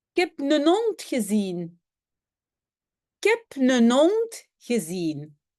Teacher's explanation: Donc, le H de heb et le H de hond, on n'a pas prononcé. Oui, j'ai aussi écrit hond hein, avec un T, parce qu'en fait, en néerlandais, un D à la fin, on ne le prononce jamais comme D, c'est toujours T.